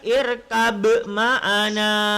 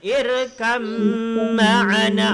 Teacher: Kerana ba bertemu dengan mem, maka masuk ke mem